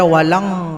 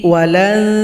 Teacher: Jangan dibaca walang, tapi walan, bunyi n-nya diarahkan ke huruf ta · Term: ikhfa hakiki